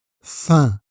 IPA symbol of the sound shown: ɛ̃